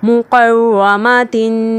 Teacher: और रा के ऊपर जब रा मुशद्दद पर ज़बर हो तो उसे हम मोटा करके पढ़ेंगे।